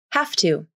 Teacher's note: the final v in have is almost always unvoiced which means the v is pronounced like an f consonant why because of assimilation the t into is voiceless so in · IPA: /hæf.tu/